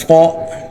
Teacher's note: صاد موٹا ہوگا، سین کی طرح نکلتا ہے دانت ملا کر سی ڈی کے ساتھ لیکن موٹا ہوگا